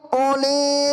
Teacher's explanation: di situ lafal uli, u-nya tidak boleh dibaca panjang